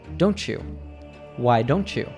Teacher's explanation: The T from don't blends with the Y from you. And together, they produce the ch sound.